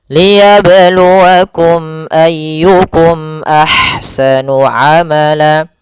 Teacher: Tapi tidak boleh tahan. Hanya sekedar saja menyempurnakan makhraj mim dan langsung dibaca a-nya. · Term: izhar syafawi